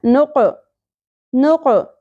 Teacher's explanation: قوف کو ساکن ہونے کی وجہ سے اس کو اپنے مخرج سے ہلا کے پڑھنا ہے. نق نہیں پڑھنا.